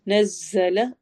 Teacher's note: ز سٹی والی آواز کے ساتھ ہوتا ہے